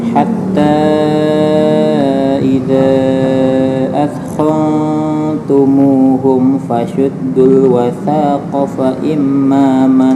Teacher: fa imma dengung ya di mim itu bacaan gunnah